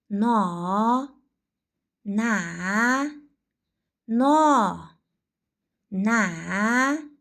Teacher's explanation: Na undosh tovush tovushini talaffuz qilayotganimizda oʻpkamizdan chiqayotgan havo oqimi og'iz boʻhligʻida toʻsiqqa uchraydi. Hosil boʻlish oʻrniga koʻra til oldi undoshi hosil boʻlish usuliga koʻra portlovchi. Ovoz va shovqinning ishtirokiga koʻra jarangli birgalikda aytamiz.